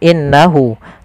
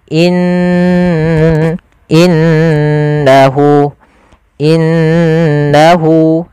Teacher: sini diwarnai dengan warna hijau cara membacanya Jangan langsung innahu tapi ditahan dulu gunahnya dimasukkan ke rongga hidung kita in innahu innahuah seperti itu kesalahan yang terjadi tidak menahan gunahnya